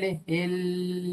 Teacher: Alveolar, cuando se junta el ápice de la lengua, la puntita de la lengua, con los alveolos.